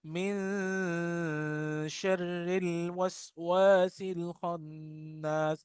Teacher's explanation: नून की आवाज को नाक में इख्फा के साथ हम तरन्नुम से पढ़ेंगे